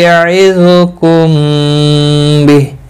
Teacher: میم ساکن کے بعد متحرک با ہے، یہاں پر اخفاء شفوی ہوگا، گنہ کے ساتھ پڑھیں گے